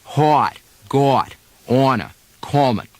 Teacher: In other regions, such as Boston and Pittsburgh, the vowel is rounded and elongated quite a bit. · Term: short O